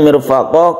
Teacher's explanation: qafnya ini adalah mad iwad, kita panjangkan satu alif saja.